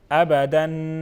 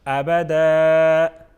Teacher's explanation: آخر میں دو زبر جب آ جائے تو ہم اس کو ایک الف کر کے پڑھتے ہیں